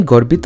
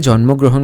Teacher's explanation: Notice how there is O in the end of Gorbito But there is no O sound in the end of Jonmogrohon